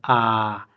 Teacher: इसमें सबसे ज़्यादा मुंह खुलता है, बोलते समय पूरा मुंह खुलता है, आ। आप लोग बोल के भी देख सकते हैं।